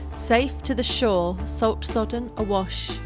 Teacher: the sibilants in the line safe to the shore salt sodden awash echoes the sound of the waves